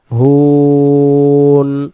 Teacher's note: হুন বাংলাতে হয় রুশ সুকার হু আদ নুন হুন হবে আর এই হু বলার সময় এটাকে আমরা তিন আলিফ টান দেব